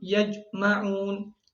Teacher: mencampurkan suara jim dengan dal. Contohnya, yajma'un.